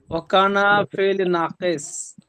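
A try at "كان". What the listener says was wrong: ওয়াও না, ওয়াও চলে এখানে আসবে না, ওয়াটা বাদ দিয়ে বলেন।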